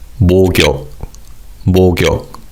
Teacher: because of connected speech, the 기역 받침 in the first syllable carries over to the second syllable. So this word is pronounced as 목욕.